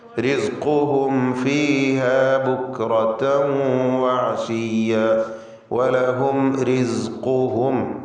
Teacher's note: ഖാഫിന് തഫ്ഖീം കൊടുക്കുക, ഇസ്തിഅലാന്റെ അക്ഷരമാണ്.